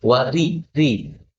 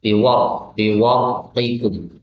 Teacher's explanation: Kalau ra'nya di kasrah maka tartik atau tipis, wari ri. Tapi ketika ra'nya disukun karena didahului dengan fathah, maka ra'nya tafkhim atau tebal, biwaritikum.